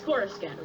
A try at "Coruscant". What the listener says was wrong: No, that's not how you pronounce it. It's Coruscant, not Coruscant. You don't pronounce the C.